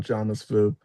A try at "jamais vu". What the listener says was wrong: Jamais vu. The S at the end is silent. Yeah, the French do all kinds of weird stuff with the letters.